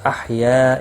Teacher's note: یا الف مدہ ہے، ایک الف کے برابر کھینچ کر پڑھیں گے۔